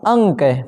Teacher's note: नाक और मुख दोनों से हवा निकलती है परंतु नाक से हवा ज्यादा निकलती है मुख से कम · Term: अनुस्वार